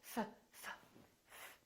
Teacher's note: There's no vibration in my vocal cords, so the F is actually a voiceless sound.